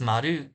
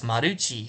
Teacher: They can't do the ML blend that we do when we do mul, and they can't do the R sound or the L sound by itself because their L is their R mixed together. It's somewhere in between